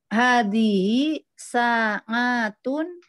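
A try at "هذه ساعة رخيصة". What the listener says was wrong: aywa, ahsanti.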